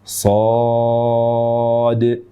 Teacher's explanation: So-nya panjang 6 harakat dan berakhiran dengan dal. Qalqalahkan huruf dal.